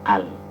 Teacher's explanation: ketika kita baca dari awal, bacaannya pasti fathah, tidak mungkin dibaca il atau ul.